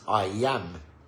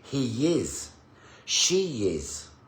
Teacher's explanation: All of those have a y sound, okay? So it's a glide. A glide, okay?